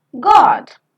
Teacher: O as in God is back, rounded, open, short vowel because it has got a counterpart of longer vowel.